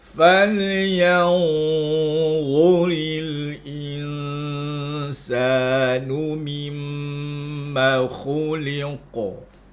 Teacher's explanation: Falyanzuri, yang tu dengung. Al-insanu, in tu dengung. Jadi bila sambung semua, falyanzuril insanu mimma khuliqa.